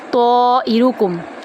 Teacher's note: تو کو ہم 3 سے 5 الف کے برابر لمبا کریں گے، تو کو پر کریں گے، حمزہ کو لمبا نہیں کریں گے، طائرکم نہیں پڑھیں گے، طائرکم، رو کو پر کریں گے اور لمبا نہیں کریں گے یہاں پر۔